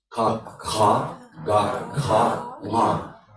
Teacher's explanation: the root of the tongue actually is pressing the soft palate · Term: velars